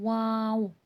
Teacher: होठों का तंग सा दायरा बनाते हैं पहले वाव और फिर होठ को पीछे की तरफ करके खोल देते हैं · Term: हुर्फ शफवी